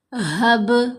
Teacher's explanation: با کو ہلائیں گے کیونکہ با کے اوپر ہم نے قلقلہ کرنا ہے